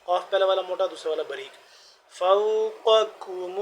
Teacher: قاف پہلا والا موٹا دوسرا والا باریک